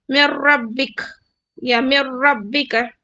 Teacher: من ربک میں دیکھیے میم کو را سے ملا رہی ہوں میں، نون کو سکپ کر رہی ہوں کیونکہ را مشدد ہے